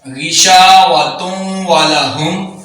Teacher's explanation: नून तनवीन है उसके बाद वाव आ रहा है तो ये भी इदगाम यरमलून यहाँ भी होगा। गिशावतुम वलहुम, तुम, तुन वलहुम नहीं, तुम वलहुम।